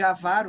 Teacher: ávaro, em vez de avaro, que é o correto, é um erro de prosódia, eu troquei a sílaba tônica de lugar.